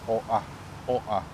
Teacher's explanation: But the way you pronounce it is Oahu, yeah? So the O and the A, there's kind of like that break, call it a glottal stop, the technical term, O'a, O'a.